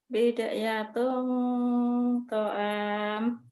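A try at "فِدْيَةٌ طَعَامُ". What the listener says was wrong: Feed ya, bukan bid, feed. Fidyatun ta'am.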